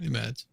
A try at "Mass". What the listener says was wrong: No, the D is silent. Mass.